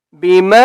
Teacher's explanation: میم کے اوپر چھوٹی مد ہے، اس لیے ہم نے میم کو 3 سے 4 الف کی مقدار کھینچ کر پڑھیں گے